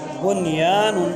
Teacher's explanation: بن کے نون پر غنہ نہیں ہوگا کیونکہ نون ساکن کے بعد یا آیا ہے، یا میں الف مد ہے۔